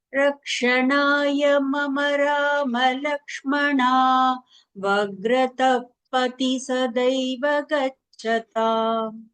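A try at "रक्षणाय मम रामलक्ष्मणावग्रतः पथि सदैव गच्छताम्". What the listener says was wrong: அது இந்த தேர்ட் தீ வரதுனால கொஞ்சம் கன்ஃபியூஷன். இப்போ வந்து ரெண்டுமே த மாதிரி கேட்டது. ஃபர்ஸ்ட் த மாதிரி கேட்டது.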